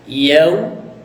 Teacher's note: wau sukun sebelumnya berharakat fathah Nah kalau wau sukun bunyinya jadi u